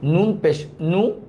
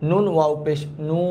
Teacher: হরকতটা যে তাড়াতাড়ি পড়তে হবে আর মাদের হরফটা হচ্ছে একালিফ পরিমাণ টেনে পড়তে হবে